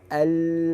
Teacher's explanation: suara yang mengalir ke mana kanan kiri lidah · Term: inhiraf